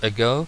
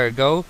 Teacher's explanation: Bien, y esta expresión con ago no se dice ago, sino ago, ¿vale? Tenemos aquí una schwa al principio.